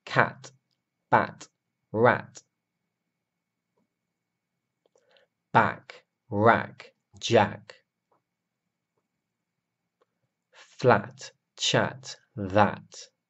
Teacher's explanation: the a sound is short and open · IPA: æ